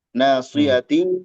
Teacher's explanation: ikhfa samar dan gunah